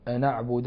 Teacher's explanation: أن أعبد ينقل ورش فيها حركة الهمز للنون، فنقرأها لورش أن أعبد الذين تدعون من دون الله، الدال الساكن تدعون فيه القلقلة، والنون الساكنة قبل الدال حكمها الإخفاء.